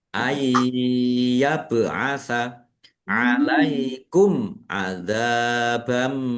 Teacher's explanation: Masuk dengan mendengung. Fathah tanwinnya tidak dibaca langsung masuk ke huruf mim ditandai mimnya ada tasdidnya. Mendengung mim ditahan biar tampak mendengungnya. · Zal fathah alif mad thobi'i panjang dua harakat. Fathah tanwin bertemu dengan huruf mim. Bacaan idgham bighunah. Masuk dengan mendengung. Fathah tanwinnya tidak dibaca langsung masuk ke huruf mim ditandai mimnya ada tasdidnya. · Bacaan izhar syafawi dibaca jelas. Zal fathah alif mad thobi'i panjang dua harakat. · Mim sukun bertemu dengan huruf ain. Bacaan izhar syafawi dibaca jelas.